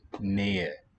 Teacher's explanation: a written H coming between the stressed and an unstressed syllable. That H would be silent, like we do in English too.